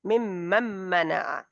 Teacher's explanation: کا یہ میم، میم میں ادغام ہو رہا ہے، کیونکہ اچھا نون جو ہے وہ آگے میم سے مل جائے گی